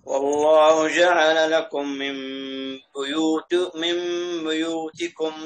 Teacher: لا احنا نقول بو بضم الشفتين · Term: ضم الباء